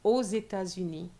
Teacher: don't forget your liaison between the X and the E